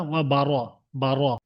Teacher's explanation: এখানে পুর হবে, র এর উপরে জাবার আছে, র কে পুর করে পড়বেন। ওয়া বারা বলবেন না, ওয়া বার, বার।